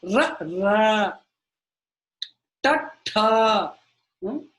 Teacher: Ta. It's kind of going da, but it's not touching the teeth. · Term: murnya